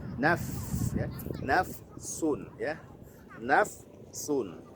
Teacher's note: ada nafas yang mengalir ketika mengucapkan huruf fa, apalagi ketika dia sukun jelas sekali